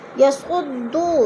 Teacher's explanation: یسعدو، دو میں وہ مدہ ہو رہا ہے، وہ ساکن سے پہلے دال کے اوپر پیش ہے تو وہ مدہ کو ایک الف 2 حرکات کے برابر کھینچ کر پڑھنا ہے